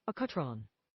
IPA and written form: ˈækjuːˌtrɒn (accutron)